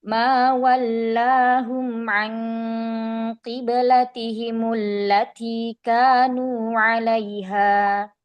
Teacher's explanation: Mainnya dinaikkan, diangkat ya, karena di situ istifham ya.